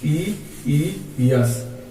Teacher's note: छोटा ई कहां से बोला जाता है, तो तालु से बोला जाता है